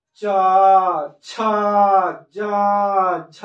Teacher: च छ ज झ, यानी कि ऊपर टकरा रहा है। ऊपर वाला जो होता है अंदर से जो तालु होता है उसमें जीभ टच कर रहा है, तो इसको हम लोग बोलेंगे तालु।